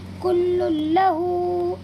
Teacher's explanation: یہاں پر بھی دو پیش کی تنوین کے بعد یہ لام آیا ہوا ہے، اسی لیے اس تنوین کی آواز کو لام میں بدل دیں گے اور بغیر کسی غننے کے اس کی ادائیگی کریں گے